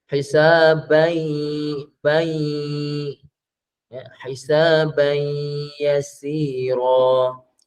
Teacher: Idgham ma'al ghunnah, idgham dengan dengung. Maka dengung tu berapa harakat ibu ayah? 2 harakat.